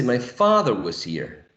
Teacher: we identified that the tonic syllable is fa